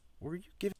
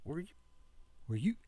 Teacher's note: That were you sounds very breathy.